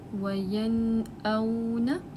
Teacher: اب اگزامپل ہے نون ساکنہ کے بعد اظہار کی، وَيَنْأَوْنَ، نون ساکنہ کے بعد حمزہ آ رہا ہے، اس وجہ سے ہم یہاں پہ نون ساکنہ کو ظاہر کر کے پڑھیں گے۔ حمزہ جو ہے وہ حلق سے ادا ہوتا ہے۔